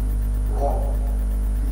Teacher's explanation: الراء هنا عليها فتحه تبقى مفخمه، سواء كانت الراء عليها فتحه او ضمه تبقى مفخمه